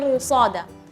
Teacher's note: ra sukun yang seharusnya dibaca tipis, tapi ternyata di sini dibaca tebal karena setelahnya ada huruf tebal yang kuat, yaitu di sini ada harfus shad, ya.